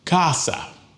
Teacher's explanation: it ends in a vowel, so the stress goes on the second to the last syllable.